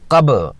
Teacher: با ساکن کتب جا کے حروف میں سے ایک ہے اور چونکہ یہ ساکن ہے اس لیے یہاں قلقلہ ہوگا۔ قب با کی آواز اپنے مخرج سے واپس آتی ہوئی سنائی دے